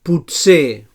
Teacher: So alveolar africat sord.